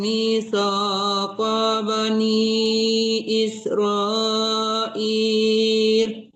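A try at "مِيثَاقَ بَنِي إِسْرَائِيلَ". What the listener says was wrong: ya, masih tertahan di ko-nya ya. Mitsaqa bani.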